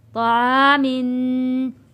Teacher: طا موٹا پڑھا جائے گا، طا کے اوپر زبر ہے، زبر کو ہم نے کھینچ کر نہیں پڑھنا ہے، اور الف سے پہلے زبر آ گیا، حروف مدہ ہے، حروف مدہ کو ہم نے ایک الف کے برابر کھینچ کر پڑھا ہے، طعا، میم دو زیر من، طعامن۔